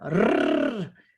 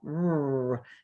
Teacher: Oh, in Spanish, they trill the R. Rrr. In English, we do not trill at all.